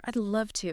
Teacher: It is like the word would is so soft, it almost completely disappears into the sentence.